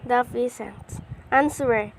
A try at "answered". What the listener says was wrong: Once again, the student mispronounced peasant to pheasants and mispronounced answered to answer, omitting the D sound.